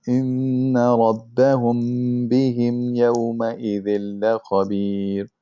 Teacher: you have to have the gunna and you have to hide the mim by just closing your lips. Okay, it's hard to kind of see that, because you kind of hear the meme, but it's hiding it by closing your lips.